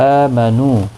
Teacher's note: حمزہ کے اوپر کھڑی زبر ہے، ایک الف کی مقدار کے برابر کھینچ کر پڑھیں گے۔ نو واو مدہ ہے، ایک الف کی مقدار کے برابر کھینچ کر پڑھیں گے۔